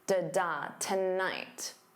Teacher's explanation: The first syllable is unstressed, so 2 becomes that unstressed ta, and the night is your stress syllable tonight, da da tonight. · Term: syllable stress